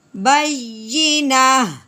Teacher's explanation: جب گول تا ہو تو وقف کی صورت میں تا کو ختم کر دیتے ہیں اور پیچھے ہا کی آواز نکالتے ہیں